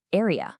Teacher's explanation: The Z sound is sitting at a dismal 25 out of 100. It's basically dropping entirely at the ends of words